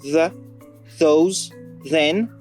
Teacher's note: Le TH va généralement se prononcer /ð/ dans les mots grammaticaux comme the, those, then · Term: TH voisé